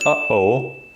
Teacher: So this exists a lot in Arabic as well, this sound, which actually, even if you're an American English speaker, like if you're speaking American English, this isn't super foreign, because if you can pronounce the word like uh-oh, this is one of the most commonly given examples for the glottal stop.